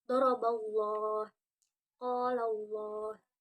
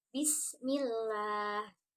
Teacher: lam dalam lafaz Allah dibaca tebal ketika didahului fathah atau domah · lam dalam lafaz Allah dibaca tipis ketika didahului kasroh